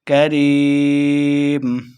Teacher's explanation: اس کاف کو ہم نے موٹا بالکل نہیں پڑھنا